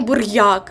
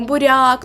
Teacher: Тобто йод не чуємо. Отже, р буде м'яким